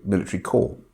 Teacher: Now, when she says corpse, she obviously doesn't realize that we don't pronounce the P in corpse